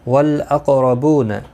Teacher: قاف حروف مستعلیہ ہے، پر پڑھا جائے گا. اس پر قلقلہ بھی ہوگا، ساکن ہے اور زبر کی وجہ سے پر پڑھا جائے گا.